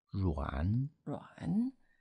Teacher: It's the third tone, falling and rising tone.